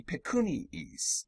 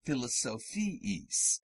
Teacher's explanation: These double I sounds are not diphthongs, but two different syllables separated by a Y sound, iis, which is implied by the juxtaposition of the two I's.